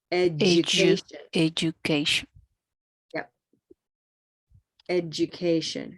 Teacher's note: I want you to think of that D is also having a little J